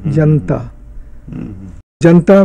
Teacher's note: दूसरा ये है कि शब्द के बीच में भी आ का लोप होता है अगर शब्द दो रूपिम का शब्द है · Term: श्वा डिलीशन